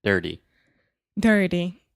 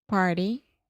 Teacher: One more example of where we often see the flap T in English is when you have an R before the T.